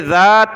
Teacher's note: ذال پر زبان نکالیں